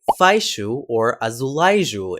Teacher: What is happening here in European Portuguese is that the glide is being conditioned by an a vowel sound that has a sh or j sound following it